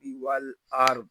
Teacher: آگے را کو پر پڑھیں گے، ضاد کو بھی پر پڑھیں گے کیونکہ ضاد حروف مستعالیہ میں سے ہے اور را ساکن سے پہلے زبر آ گیا ہے۔